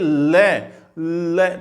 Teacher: तो जीव सीधी दांत से टकराती है। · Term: दंत्य